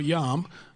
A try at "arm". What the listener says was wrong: There's no J in arm. No.